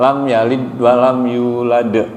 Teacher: lidnya itu pantulannya tipis lam yalid walam yulad jadi ada qqolahnya lidnya itu dalnya mati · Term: qalqolah